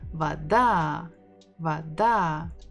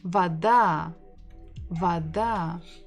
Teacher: The same letter, bukva V, va, da, vada. We stress the final syllable.